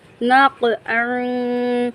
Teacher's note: 2 نقاط والا جو قاف ہے اس قاف کو ہم پر یعنی موٹا پڑھتے ہیں